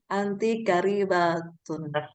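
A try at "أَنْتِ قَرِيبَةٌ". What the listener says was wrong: Kenapa jadi K? Kok?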